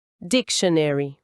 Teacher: No inglês americano, o tio soa mais como ch e tem um som de chuá, que é aquele, uma vogal bem curtinha e neutra antes do n, dictionary.